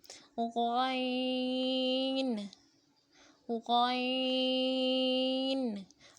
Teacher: حلق کے شروع کے حصے سے جو منہ کی طرف ہے اس سے غین کو ادا کریں گے